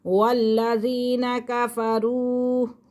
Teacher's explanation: واو ساکن سے پہلے پیش ہے، یہ واو مدہ ہے، اسی لیے ہم اسے تھوڑا لونگ کر رہے ہیں